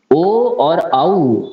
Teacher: ओ और औ इसका उच्चारण कंठोष्ठ से होता है